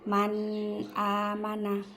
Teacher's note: Nunnya itu dijelaskan, dinampakkan, tidak usah didengungkan. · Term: idhar